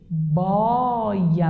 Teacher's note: Então, este O é aberto.